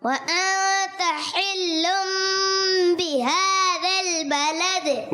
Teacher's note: ता के बाद अलिफ तो नहीं है ना, तो खींचना भी नहीं है. व अंता हरकत जो होती हैं वो बगैर खींचे, बगैर झटका दिए पढ़ते हैं.